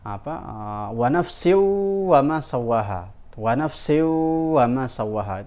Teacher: Nah, ada hukum gunnah di situ, idgham bi gunnah. Idgham melebur huruf, wa nafsin yang bunyi nun mati dilebur ke bunyi wawu itu dengan cara dia gunnah, didengung, berarti ditahan di situ.